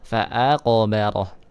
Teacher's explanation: Nah, di sini ada huruf qalqalah, huruf qaf ya. Jadi dipantulkan